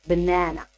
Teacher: our stress is on second syllable